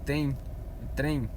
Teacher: Tem, trem, ele tem um som como se tivesse um I depois dele. Uma palavra que pela fonologia, ela pode até ser considerada um ditongo, mesmo não tendo um I no final.